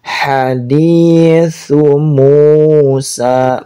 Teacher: su di ujung lidah, bukan su, bukan syu, tapi su di ujung lidah, lembut. Haditsu Musa, mu-nya panjang, sa-nya juga panjang.